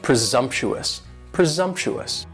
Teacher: And presumptuous has 4 syllables, and the stress is on that second syllable. And the S almost sounds a little more like a Z